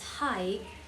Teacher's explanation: The sound moves or glides from the first vowel sound to the next vowels without a pause or abstraction. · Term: diphthong